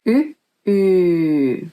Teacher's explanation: There is no difference concerning the pronunciation, only the rhythm is different, because the first Ö is short and the second Ö is long.